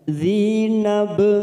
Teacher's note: ada huruf ba sukun qalqalah sugroh karena mati di tengah kalimat kita pantulkan